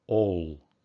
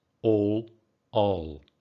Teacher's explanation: in british english that is strongly rounded all in american english it's all unrounded